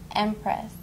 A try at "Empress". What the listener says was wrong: Now really hit the P. Empress. Spit it.